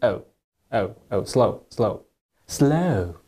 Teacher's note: the british english they tend to use the glide much more than the american way of saying it